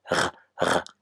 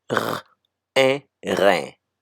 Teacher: It's R with your mouth open and then the sound coming from the back.